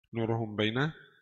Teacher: mim sakinah mukhfah عند الباء المفتوحة بغنة حركتين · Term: ikhfa syafawi